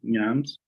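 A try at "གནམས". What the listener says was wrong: Nam. Don't pronounce the S in that one.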